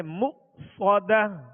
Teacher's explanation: یہاں حمزہ ساکن ہے, اس کو جھٹکے سے ادا کریں گے